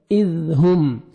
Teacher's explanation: سامنے والا جو 2 دانت ہیں اوپر والے وہاں نیچے زبان ٹچ کریں گے تو نرمی سے زال ادا ہوئے گا